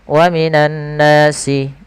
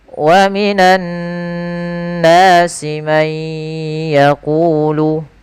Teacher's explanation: tidak menahan gunnahnya, harusnya ditahan dulu sepanjang 2 harakat